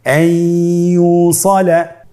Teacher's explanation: ইয়া হরফটি হলো ইদগামে বাগুন্নার হরফ। তাহলে নুনকে আমরা পরবর্তী হরফ ইয়ার সাথে মিলিয়ে গুন্নার সহিত পড়ব